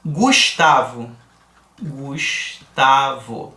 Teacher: eu tenho G com u aqui mas eu escuto o som do G no Gu e também escuto o som do U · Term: dois fonemas